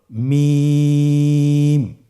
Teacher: হরফটির উচ্চারণ স্থান দুই ঠোটের শুকন স্থান থেকে উচ্চারিত হয়। এইযে আমরা দুইটি ঠোট দেখছি এটা যে শুকন অংশ আসছে সেখান থেকে হরফটি উচ্চারিত হয়।